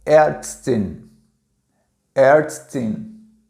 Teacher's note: E o A tremado se pronuncia um A misturado com E, certo? Um E aberto, tá?